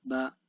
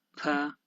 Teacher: when I pronounce B, it will be like normal, like without any air or flow, so it will be like ba.